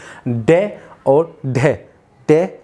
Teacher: जैसे हमने डे और डे का उच्चारण किया तो हमारी जो जीभ है वो मूर्धन्य से टकराएगी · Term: उक्षिप्त व्यंजन